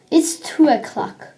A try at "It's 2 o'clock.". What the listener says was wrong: O'clock. Yeah, you don't need to say oh.